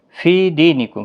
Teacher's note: فی یا مدہ ہے، دی یا مدہ ہے، دونوں کو 1 الف کی مقدار کے برابر کھینچ کر پڑھیں گے۔ میم ساکن کے بعد واو اظہار شفوی ہوگا۔